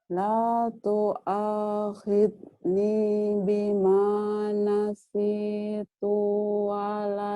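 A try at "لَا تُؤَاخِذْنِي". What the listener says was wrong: Tuhnya pendek.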